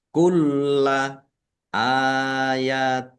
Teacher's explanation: Kulla, lamnya dibaca double, ada tasdidnya, ditekan.